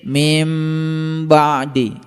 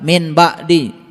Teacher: Ketika nun mati ketemu dengan ba, dibacanya mim, didengung sedikit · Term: iqlab